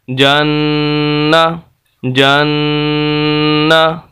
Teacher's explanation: यहाँ पर हम इसकी आवाज़ को नाक के अंदर एक अलिफ के बराबर लेकर जाएंगे, तो ये गुन्ना कहलाएगा